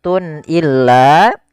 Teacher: Kemudian pada lafal Tun illa di sini ada izhar halqi yaitu suara tanwinnya harus dibaca dengan jelas karena ketemu dengan huruf hamzah